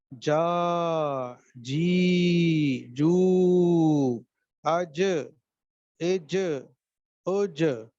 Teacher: یہ آپ کا زبان کا جو سینٹر ہے، یہ اوپر کے تالو سے جو بالمقابل ہے اس کے، اس سے جا کر ٹکرا رہا ہے، باقی کہیں بھی زبان نہیں لگ رہی. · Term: جیم